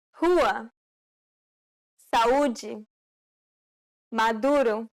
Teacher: This is identical to the U in the word rule. There are no open or closed variants for the U sound in Portuguese.